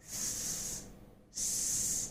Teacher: the tongue is literally lying flat on the bottom of your mouth and it's not touching anywhere, and the air is allowed to pass with audible friction through that limited space that we have here.